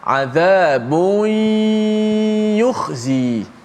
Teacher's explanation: maka kita masukkan suara nun mati ataupun tanwin itu ke dalam ya beserta, bukan selepas itu gunnah, beserta gunnah.